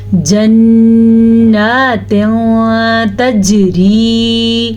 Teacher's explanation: جیم پہ کلکلا کرنا آپ نہیں بھولنا